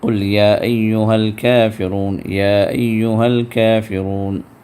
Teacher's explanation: تو مد منفصل مد جائز ہے، یعنی 4 حرکت تک کھینچنا جائز ہے